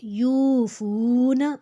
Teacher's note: یا کے اوپر پیش، واؤ کے اوپر جزم، جس کی وجہ سے دو حرکت لمبا کھینچیں گے